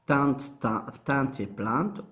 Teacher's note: on aura T consonantique, un E ouvert nasal, un T consonantique, et le E est aphone, ça veut dire caduc. Plainte, P, L, E ouvert ou E ouvert pas dans nasal, puis T.